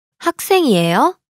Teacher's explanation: the question is formed by the rising intonation